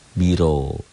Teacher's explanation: Qul a'udzu biro. Ro-nya tebal tafkhim karena baris di atas.